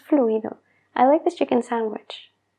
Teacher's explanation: los nativos suelen omitir ciertas letras para hablar más rápido y la d es una de ellas